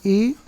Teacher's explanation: ई वर्ण ह्रस्व ई हो चाहे दीर्घ हो, कहाँ से बोला जाता है? तालु से बोला जाता है। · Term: तालव्य वर्ण